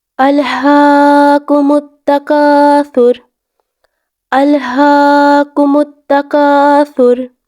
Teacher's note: یہاں پر حمزہ کو لام کے ساتھ ملانا ہے اور ہا کی آواز کو تھوڑا سا لمبا کرنا ہے. ہا کی آواز کو ہم لوگ 1 سے 2 سیکنڈ کے لیے لمبا کریں گے کیونکہ کھڑی زبر ہے.